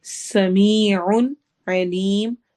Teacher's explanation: سین سٹی والی آواز ہوگی